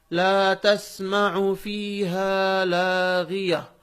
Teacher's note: اس لیے کہ اس کے بعد ہم رک رہے ہیں، وقف کر رہے ہیں. آیت ہے، جب آیت پر رکتے ہیں تو گولتا ہا بن جاتی ہے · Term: ہائے ساکنہ